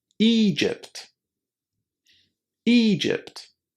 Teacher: all you need to do is to remember to say a long e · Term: long e sound